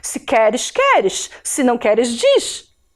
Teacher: E o som do S marcado também é um chiado